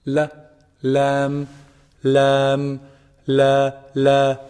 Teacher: pronounced from the tip of the tongue when it hits the gum or the gums of the upper incisors